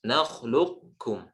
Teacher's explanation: Di huruf kha yang sukun, huruf kha itu isti'la, sebelumnya ada huruf harokat fathah, maka ditebalkan.